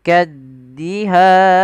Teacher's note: ini kita namakan dengan mad arid lukun panjang nya berapa harakat kita boleh memanjangkan dua harakat boleh pula empat harakat boleh pula enam harakat tapi kita ngambil yang tengah-tengah tidak terlalu panjang dan tidak terlalu